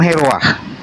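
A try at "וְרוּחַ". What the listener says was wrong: Ferua bukan heruah. Bukan bukan heruah, feruah. feruah.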